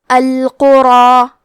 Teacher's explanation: مد الف میں پیچھے والے حرف کا حکم لیتے ہیں تفخیم میں اور ترقیق میں تو ہمیں یہاں مد الف کو بھی بھاری آواز میں ادا کرنا ہے